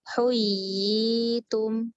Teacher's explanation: mad tamkin itu terjadi ketika ada ya yang bertasydid kasroh dan setelahnya ya sukun. Maka yang terjadi mad ya kan di situ dengan mikdar 2 harokat